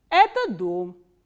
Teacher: we start from a medium pitch and it goes down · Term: intonational construction